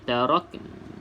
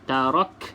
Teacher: kita nak sebut huruf nun tetapi tidak sebut sampai baris dia tarakna itu Dah sebut baris tak boleh sebab kita nak berhenti